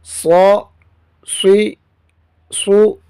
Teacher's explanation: صاد میں سیٹی کی آواز موٹی کر کے، اس کو سیٹی کی آواز بھی آنی چاہیے اور موٹا بھی ہونا ہے چاہیے، لیکن ہونٹ گول نہ ہوں